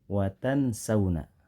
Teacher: suaranya mengambang dan disertai gunah yang lamanya dua harakat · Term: ikhfa